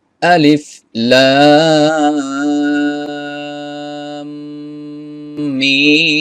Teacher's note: হবে গুন্না করতে হবে কেন এই যে মিমের উপরে তাসদিদ আছে গুন্না করার পরে আবার এই মিমের চার আলিফ পরিমাণ টান দিতে হবে